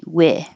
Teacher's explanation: So if it sounds like E, weeth, then your tongue is too high. We. It should be wi.